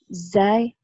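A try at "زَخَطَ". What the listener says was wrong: Zainya berubah zai. Jadi za. Za. Zainya jadi za.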